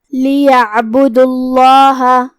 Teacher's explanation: یہاں لفظ الجلالہ کا حکم ہے تفخیم کیونکہ اس سے پہلے پیش ہے